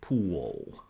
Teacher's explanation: sometimes an l can come out as a dark l like in pool